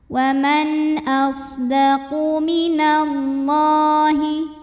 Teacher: lam pada lafaz Allah dibunyikan secara tafkhim karena huruf sebelumnya berbaris fathah maka bacanya tebal · karena nun sukun menghadapi huruf tenggorokan yaitu Hamzah maka Nun dibaca jelas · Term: izhar halqi